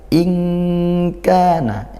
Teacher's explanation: in Kana ini ikhfa Hakiki nun sukun bertemu Kaf